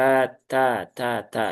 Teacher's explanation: ta ada aliran nafasnya ya walaupun sedikit ya ada aliran udaranya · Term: alhams